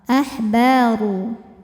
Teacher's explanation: Maka kalau diteruskan ru-nya tebal. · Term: tafkhim